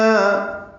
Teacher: او وولین ہے ہونٹوں کو نا تمام گول کریں گے